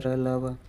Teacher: इसके उच्चारण में जिह्वा, ताल, मूर्धा, दंत के पास जाती है परंतु स्पर्श नहीं करती है।